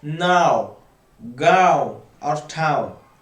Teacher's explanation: अनुनासिक में मतलब जो भी हम वर्ड शब्द बोलते हैं उसका उच्चारण में नाक और मुंह से बोलते हैं